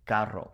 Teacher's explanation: most people will say carro with that rolled R